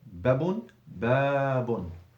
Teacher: Yeah, it's harfu maddin. You're stretching the fatha from 1 to 2 seconds.